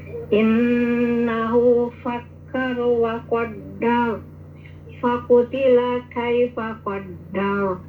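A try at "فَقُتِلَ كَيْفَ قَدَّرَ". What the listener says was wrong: Leras, halus atuh.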